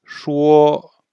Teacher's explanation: Donc répétez, shuo. Et c'est au premier ton, donc c'est O. On le prononce bien comme un La en musique.